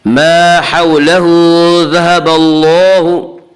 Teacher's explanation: یہاں اللہ کے لام سے پہلے با کے اوپر زبر ہے، اس لیے اللہ کے لام کو پر پڑھیں گے۔ اور اللہ میں مد اصلی ہوگا۔